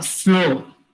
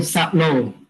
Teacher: insertion of vowel between consonant cluster